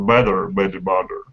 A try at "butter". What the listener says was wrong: make sure your butter is butter because currently it sounds a little bit like batter when you say it